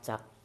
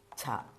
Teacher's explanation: അവിടം കൊണ്ട് സംസാരിക്കുന്ന ഒച്ച വരുന്ന ഭാഗം അക്ഷരങ്ങളാണ് ചവർഗം. ആദ്യത്തത് സാദാ ച. ഹാ ശബ്ദം വരുമ്പോൾ ഛ